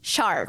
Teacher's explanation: então acho que eu diria o r né então é é retroflexo como americano